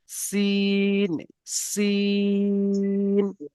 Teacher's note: সেই অক্ষরটি হবে হালকা আওয়াজ একদমই যেরকম গাড়ির সিটি যেরকম বাজায় গাড়ির সিটি সিন সিন বুঝতে পারছেন এমনভাবে একদমই পুরো হালকা আওয়াজে হবে।